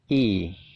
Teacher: bacanya itu i, nyengir gitu ya, jadi agak panjang. Suaranya adalah i, kayak gitu ya.